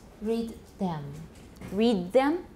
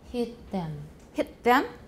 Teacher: dentalization of um alveolar consonants before dental consonants